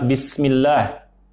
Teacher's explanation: huruf sin harus dibacanya rakhawah, dia mengalir, jangan dibaca memantul seperti bis